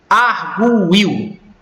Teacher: Esse U, ele não é pronunciado de uma maneira tão intensa a ponto de formar uma sílaba isolada. Mas aqui está separado como se eu falasse arguil.